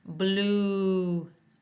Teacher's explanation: phonetic symbol u w the tongue is high in its back the mouth is tense the lips opened in a circle heard in blue soon you see the circle of my mouth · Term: long ooh sound